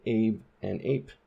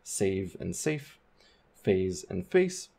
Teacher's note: have those vibrations then a is shortened so Abe and ape you can hear a difference in the length of that diphthong